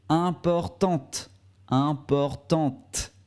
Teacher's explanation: pour la forme féminine, on ne prononce pas le E final, mais on prononce le T